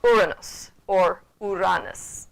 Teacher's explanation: a so just schwa that's what we call them Linguistics just make it a non-descript vowel at the end and call it a day